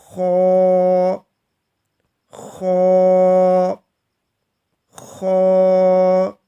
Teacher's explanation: چن کی back side پر اگر آپ ہاتھ لگائیں گے تو یہ حلق کا اوپری حصہ ہے، تو ہم نے خا کو وہاں سے ادا کرنا ہے۔ خا پر پڑھنا ہے، موٹا پڑھنا ہے اور منہ بھر کے پڑھنا ہے · اس کو بھی ہم حلق سے ادا کرتے ہیں، لیکن یہ حلق کے اوپر والے حصے سے ادا کیا جاتا ہے، جہاں پر آپ کی ٹھوڑی ہے، چن ہے۔